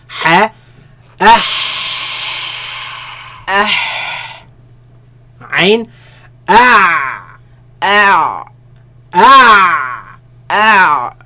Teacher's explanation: They come from the middle of the throat, where the epiglottis moves back towards the back of the throat, right? And constricts the passing of the sound and the air, right?